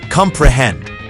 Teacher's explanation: consists of three syllables where the first two are unstressed and the last one is stressed